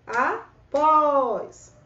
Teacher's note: E repare que é o O que se prolonga. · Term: oxítona